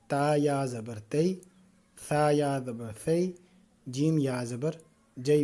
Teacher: لین کو نرمی سے پڑھنا ہوتا ہے، اس کو کھینچنا نہیں ہوتا